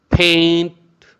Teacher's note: P is giving hard sound means aspirated sound, but T is giving the light and soft sound